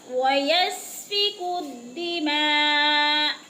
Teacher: سین کو سیٹی کی آواز سے ہلانا نہیں ہے، ادھر قلقلہ نہیں ہے، الدِّمَاء، ما پہ مد، آخر वक़्फ़ की सूरत में हमज़ा को साकिन कर देंगे।